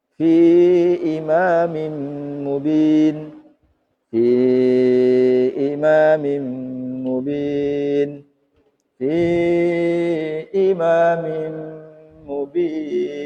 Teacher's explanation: mad arid itu boleh dibaca 1 alif, boleh 2 alif, boleh 3 alif